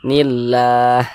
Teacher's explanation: lam jalalahnya ini dibaca tipis, dibaca tarkik.